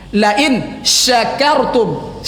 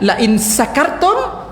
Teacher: Pakai shin, berangin tafasyi, tersembur angin dari sela-sela gigi. Ya, tersembur angin dari sela-sela gigi itu tafasyi, sifat shin.